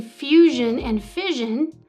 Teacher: In fusion and fission, the original s softened to zh.